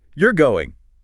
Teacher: It rises and then falls sharply. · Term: rise-fall pattern